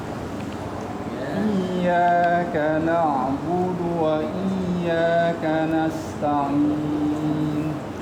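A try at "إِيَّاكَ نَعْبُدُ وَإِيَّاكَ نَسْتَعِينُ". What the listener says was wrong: Ainnya itu masuk al-jauf ya. Ta'i. Masih al-jauf ya itu. Ainnya karena pasangannya matnya ya ya. Nasta'in.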